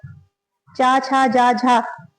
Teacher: चा, छा, जा, झा को स्पर्श संघर्षी व्यंजन भी कहते हैं।